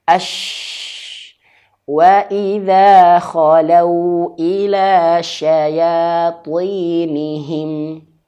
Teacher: huruf syin ini dia memiliki sifat tafasyi. Bertebaran angin di dalam mulut.